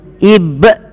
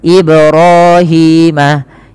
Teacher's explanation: Harusnya dipantulkan dan tidak menambahkan hamzah. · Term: qalqalah